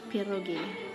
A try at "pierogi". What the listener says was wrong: You didn't roll the R.